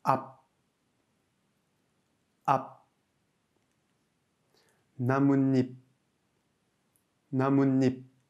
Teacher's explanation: En fin de syllabe, le piep prend un son de biep, son B étouffé.